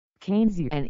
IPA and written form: ˈkeɪnziən (Keynesian)